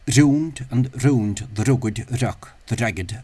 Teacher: there are different variations of that slender R sound amongst native speakers um sometimes as a tap sometimes as a fricative uh here I'll try to use the uh tapped one uh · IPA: [ɾ']